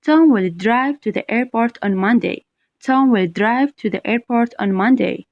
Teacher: Now, the question that comes before, how will Tom get to the airport? So, naturally, the stress will be on the word drive.